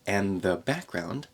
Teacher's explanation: drop the D in and and connect